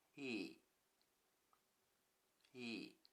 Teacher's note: In I, the first mora is pronounced high-pitched and the second low-pitched, so the whole word has a falling intonation.